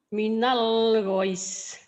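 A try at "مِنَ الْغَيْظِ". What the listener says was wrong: Panjang ujungnya mad adid li sukun di sini madlin. Minal ghoyos. Minal ghoyos.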